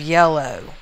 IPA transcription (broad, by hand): jelo